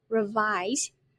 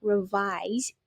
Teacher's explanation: We put the stress on the second and be careful it ends with Z sound